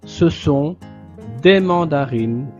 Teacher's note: quand une voyelle est juste derrière le N de la voyelle nasale 1, la voyelle nasale s'élimine. Donc on ne prononce plus un, sinon on prononce ici le I et le son de la N, N.